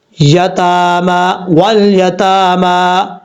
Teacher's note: تا کے اوپر بھی کھڑا زبر ہے، میم کے اوپر بھی کھڑا زبر ہے، ایک ایک الف کی مقدار اس کو لمبا کر کے پڑھیں گے